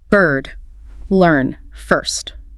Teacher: It's a central vowel. Lips may be gently rounded. Tongue is in the middle of the mouth, raised just a bit. It's a long, steady sound.